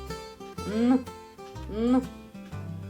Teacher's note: Звук Н. Твердий приголосний. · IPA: [н]